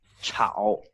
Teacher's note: But in Chinese, like pinyin, we'll use this thing, like chow, CHAO. And it's the third tone in pinyin.